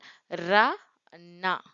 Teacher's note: நுனினா அண்ணாந்து அன்னத்தை ஒற்ற பிறக்கும் எழுத்துக்கள்